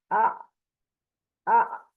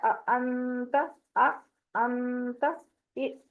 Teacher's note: اب یہ جو ساکن حمزہ ہوتا ہے نا اس کو جھٹکے سے ادا کیا جاتا ہے